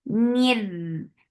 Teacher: This is idgham without gunna, so you are not keeping the sound in your nose at all.